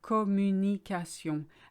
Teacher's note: there's no stress on any part of the word.